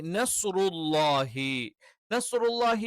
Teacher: സ്വ എന്നുള്ളതിന്റെ മഹ്റജ് എന്താണ് നാവിൻറെ അറ്റം അത് രണ്ട് മുൻപല്ലുകളുടെ വിടവിന് നേരെ പിന്നിൽ വെച്ചുകൊണ്ട് ഉച്ചരിക്കണം